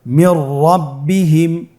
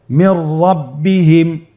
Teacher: নুন সাকিনের পরে যদি র হরফ আসে তাহলে নুন সাকিনকে পরবর্তী হরফের সাথে মিলিয়ে গুন্না ছাড়া পড়তে হবে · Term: ইদগামে বিলা গুন্না